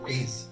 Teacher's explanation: This word is a bit unusual because even though it is Raise. spelled with S, it's pronounced with a voice Z